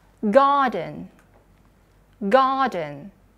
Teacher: kalau British tinggal dihilangkan R-nya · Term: non-rhotic